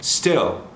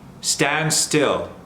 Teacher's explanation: Nice and relaxed, no L at all.